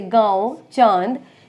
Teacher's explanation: अनुनासिक वे स्वर होते हैं जिनको हम मुख और नाक देखिए नाक और मुख दोनों की सहायता से उच्चारण करते हैं · इसमें मुख और नाक दोनों का प्रयोग होता है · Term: चंद्र बिंदु